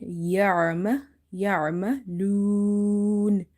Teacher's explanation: here I have stretched up to 3 alif, because I have applied the rule of madde arid lissakun · Again we have ain, and the pronunciation of ain is from the middle of the throat